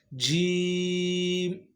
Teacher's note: زبان کے درمیانے حصے کو جب آپ اوپر تالو کے ساتھ ٹچ کرتے ہیں تو یہاں سے جیم ادا ہوتا ہے